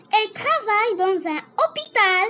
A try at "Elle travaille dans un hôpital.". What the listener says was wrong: Alors, la liaison. Dans un hôpital. Alors, tu répètes.